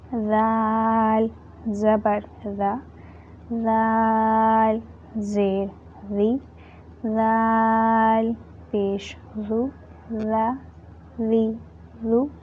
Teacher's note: Now zal, some students pronounce it like zal, which is wrong. Zal, tip of your tongue touching inner edges of your top 2 teeth. It gives voiced th sound.